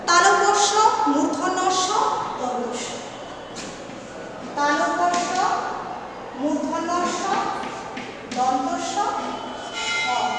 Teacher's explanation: এই ধ্বনিগুলো উচ্চারণের সময় শ্বাসবায়ুর একটা প্রাধান্য থাকে, বেশি শ্বাসবায়ু নির্গত হয়। এবং দেখো, এই ধ্বনিগুলো উচ্চারণের সময় শ্বাসবায়ু কী হয় না, শ্বাসবায়ুর প্রাধান্য থাকার কারণে একটা শিশির মতো ধ্বনি কিন্তু আসে, শিশির মতো একটা আওয়াজ সৃষ্টি হয়, সেগুলো হচ্ছে উষ্ম ধ্বনি।